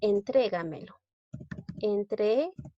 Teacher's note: Lleva la mayor fuerza de voz en la sílaba 3. Es una palabra sobresdrújula.